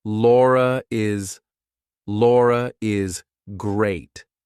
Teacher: if I have to link my name to something else that's a vowel I have to put an r in there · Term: intrusive R